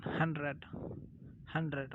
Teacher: We Indian call it 100, but D is never pronounced